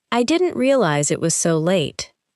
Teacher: Try not to pause between realize and it. Let the sounds connect.